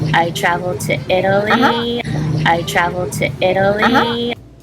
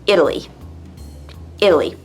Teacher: if you can hear the D sound where you would read a T